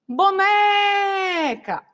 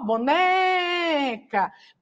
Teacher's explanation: o né é a sílaba tônica as outras são átonas